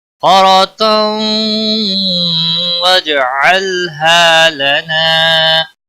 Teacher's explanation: تنوین کے بعد حروف یرملون کا واو آیا ہے، ادغام باغنہ ہوگا، جیم ساکن پر قلقلہ ہوگا